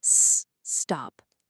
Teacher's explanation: A lot of learners will say e-stop, but the word doesn't start with an E sound, right? It starts with that S sound. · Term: extra vowel